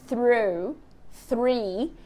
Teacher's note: você tá com a língua aqui na frente e depois tem que fazer o R retroflexo lá atrás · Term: th seguido de r